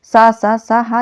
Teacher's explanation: ये उष्म व्यंजन भी है और यह महाप्राण भी होते हैं